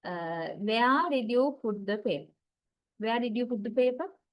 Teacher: a WH question. When we talk about the intonation of WH question, that has long falling intonation pattern